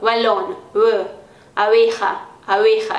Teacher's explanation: É como se eu fosse fazer um B, mas eu não pressiono muito os lábios, né? Eu deixo mais separadinho, então, balón, abeja, abeja, e não é abeja e nem abeja, abeja.